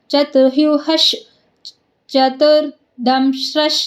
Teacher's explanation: ವಿಸರ್ಗದ ಮುಂದೆ ಚ ಇರೋದ್ರಿಂದ ಆಟೋಮೆಟಿಕ್ ಆಗಿ ವಿಸರ್ಗ ಅಲ್ಲಿ ಅರ್ಧಶ ಆಗುತ್ತೆ ಅರ್ಧಚ ಆಗಲ್ಲ ಅರ್ಧಶ ಆಗುತ್ತೆ ಇದೆಲ್ಲ ರೂಲ್ಸ್ ನೋಡ್ಕೋಬೇಕು ಚತುರ್ುಹಶ ಚತುರ್ದಂಶ ಚತುರ್ಭುಜಹ ಈಗ